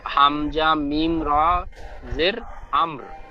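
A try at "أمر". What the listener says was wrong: হামজা মিম র জের নয়, এই জাবারটি হবে, হামজার উপরে যে জাবার ওই জাবার, হামজা মিম র জাবার,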